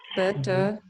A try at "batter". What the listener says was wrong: No, butter is B-U-T-T-E-R, butter. This is not better. This is not butter. This is batter.